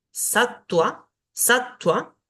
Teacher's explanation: La Va, que si está después de una consonante va a sonar como U